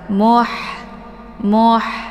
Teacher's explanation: cara baca ha-nya dialirkan dengan desis nafas yang agak samar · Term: ha sukun